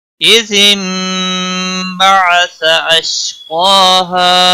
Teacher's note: نون ساکن کے بعد با آیا ہے، قلب ہوگا